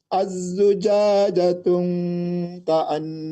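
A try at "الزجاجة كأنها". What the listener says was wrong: Tidak ada tenggung, tidak ada dengung. Dhammah saja, bukan dhammatain. Az-zujajatu ka'annaha. Tuknya tidak didengungkan. Yang az-zujajatu dhammah, bukan dhammatain.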